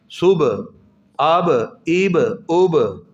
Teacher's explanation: با کی آواز میں قلقلہ پیدا ہوگا